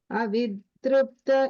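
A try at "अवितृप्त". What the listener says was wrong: Second time you said it correct, and the word tripta, I think first time when you were saying it was a da sound I heard.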